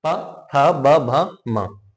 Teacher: जब तक हमारे होठ नहीं मिलेंगे हम इनको उच्चारण नहीं कर पाएंगे जैसे प एक ओट पकड़ के देखिए नहीं बोल पाएंगे आप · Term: ओष्ठ